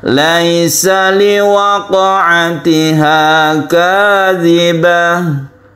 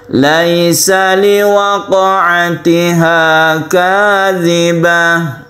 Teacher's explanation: Tidak perlu dicengkokkan. Sukun qaf itu adalah qalqala, kita pantulkan.